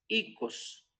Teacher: este doble vocal se vuelve como un solo vocal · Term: diptongos